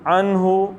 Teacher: نون کا اظہار کرنا ہے کیونکہ آگے ہا ہلکی ہے اور ہا سینے سے نکالنا ہے